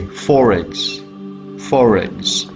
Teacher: Ra here with linking is already there in the base word itself, but not pronounced in final position in BBC accent